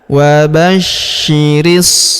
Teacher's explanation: kita tahan dan tekan karena terdapat tanda tasdid di atasnya dan kita panjangkan dua harakat karena alif kecil di atasnya ya.